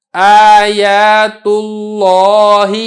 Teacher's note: چونکہ لفظ اللہ سے پہلے پیش ہے لہذا لفظ اللہ کو ہم نے موٹا کر کے ادا کیا